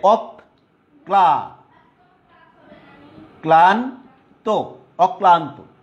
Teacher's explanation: যে বর্ণের সাথে ল ফলাটা যুক্ত হয়েছে সেই বর্ণটা দুইবার উচ্চারণ হয়েছে, দ্বিত্ব উচ্চারণ হয়েছে